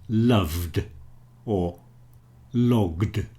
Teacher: Usually, the e is not sounded, so you will only hear the d sound, as in loved, or logged.